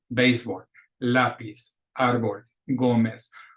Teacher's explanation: All those words we want accented to be pronounced correctly on the second to the last syllable, which in this case is the first syllable. But the rule is always to count backwards, second to the last.